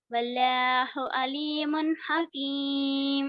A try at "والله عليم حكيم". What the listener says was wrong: اللہ کا لام موٹا پڑھو. واللہ.